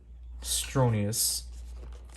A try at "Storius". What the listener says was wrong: You said it with an N.